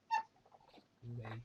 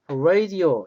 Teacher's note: 근데 영어의 R 발음은 원순 자음이에요. 그래서 입술을 동그랗게 마르셔야 되는 거예요. 그래서 라디오도 원래 라디오 이렇게 옮기는 게 영어에 좀 갖고 와요.